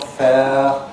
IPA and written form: feə (fair)